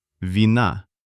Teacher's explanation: the stress falls on the very end, on the letter A, and the first vowel E without stress just sounds a bit shorter.